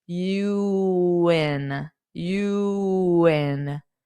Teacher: you might hear a little bit of a w sound to help glide the u in